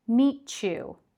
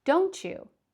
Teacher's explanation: For this video, I'm just going to point out one to you, and that is when a word ends with a T and is followed by a Y sound, which is usually represented by the letter Y in English. We change that middle sound between the words to a ch sound. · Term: assimilation